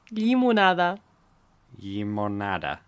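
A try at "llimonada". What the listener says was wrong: Again, it's that double l sound at the start, like lliya, but yeah, limonada. Limonada's fine.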